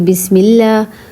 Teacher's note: لفظ اللہ کے لام سے پہلے زیر ہو تو لام باریک پڑھا جائے گا